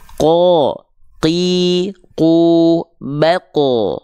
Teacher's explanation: pangkal lidahnya menyentuh dengan langit-langit yang lunak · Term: huruf q